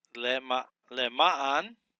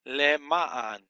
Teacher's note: The accent is on the second syllable here. You have the Lamed with the Shava, which is vocal, because under the first consonant.